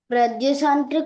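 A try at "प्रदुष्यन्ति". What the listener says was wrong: ప్రదుష్యంతి, ప్రదుషంతి కాదు, ప్రదుష్యంతి కుల స్త్రియ. అక్కడ యా వస్తుంది షాకి, సరేనా? ప్రదుషంతి కాదు, ప్రదుష్యంతి.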